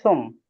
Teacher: সুম যখন বলবো তখন পুরাপুরি দুই ঠোঁট লেগে থাকবে